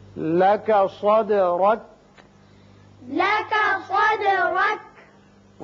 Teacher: صاد پر پڑھتے ہیں اور دال جب ساکن آ جائے تو اس کی صفت قلقلہ ادا کی جاتی ہے. را کے اوپر زبر ہے، اس کو پر پڑھیں گے.